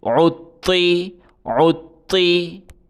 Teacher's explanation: عین کو طوا کے ساتھ ملا کے سختی کے ساتھ پڑھا جائے گا۔ طوا کے اوپر تشدید ہے، تشدید والے حرف کو سختی کے ساتھ پڑھتے ہیں۔